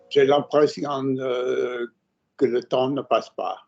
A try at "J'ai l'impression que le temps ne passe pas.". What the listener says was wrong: Good. Nice accent.